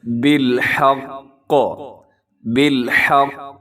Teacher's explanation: وقف کی صورت میں سنیے گا، بالحق، بالحق، تھوڑا سا آپ نے رکنا بھی ہے اور تشدید کی وجہ سے مضبوطی سے پڑھنا ہے، اور قاف ہے تو آپ نے قلقلہ بھی کرنا ہے